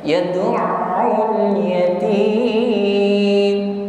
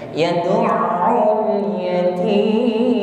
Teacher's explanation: sempurnakan huruf mim di sini, sifatnya yaitu tawassut, masih ada suara yang mengalir